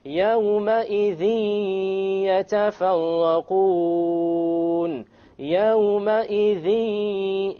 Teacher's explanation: You notice the dhi. There's a ghunnah. Okay, and there is no clear end sound.